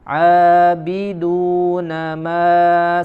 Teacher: ma pada bacaan panjang atau mad di huruf mim ya, tidak dikeluarkan melalui rongga hidung, akan tetapi dari al-jauf ya, rongga yang meliputi dari tenggorokan sampai mulut.